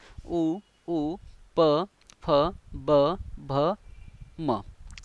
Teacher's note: प फ ब भ म हे कोणते वर्ण आहेत ओष्ट की ज्यांचा उच्चार करताना आपल्या ओठांचा आपण उपयोग करतो ओठांचा वापर करतो · यस बरोबर, ओठांचा उपयोग करून आपण जे वर्ण उच्चारतो ते म्हणजेच ओष्ठवर्ण. याच्यामध्ये कोणकोणते आहेत?